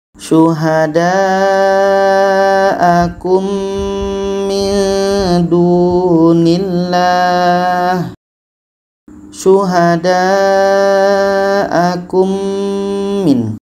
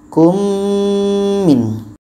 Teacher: Mim mati bertemu mim, idgham mithlan. Bertemunya dua huruf yang sama, sama-sama mim, dan kita dengungkan.